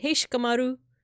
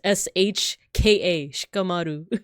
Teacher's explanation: it's almost like they omitted the the I like it's Just sh Ka a sharu so sometimes the ey